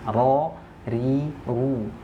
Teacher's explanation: sifat yang pertama dia jahar ya, tidak mengeluarkan nafas.